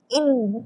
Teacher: Suara saya sangkut sebab saya tutup hidung saya.